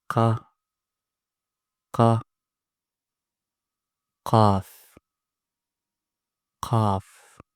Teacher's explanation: the back of your tongue goes up. Okay? And then you pronounce it that way with full mouth because it's one of the heavy letters.